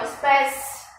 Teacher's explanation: É primeiro a semivogal e depois a vogal. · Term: ditongo crescente